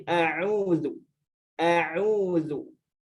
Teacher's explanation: Huruf hamzah ini huruf tipis, huruf istifal. Maka hati-hati jangan dibaca tebal.